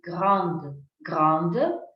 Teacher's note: Esta E sin acentuar no se pronuncia para nada. Ah, pero esta D sí.